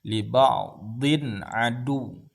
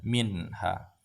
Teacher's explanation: tanwin nah ini ya setiap nun sukun atau tanwin yang ini bertemu dengan huruf Izhar dibaca jelas tanpa dengung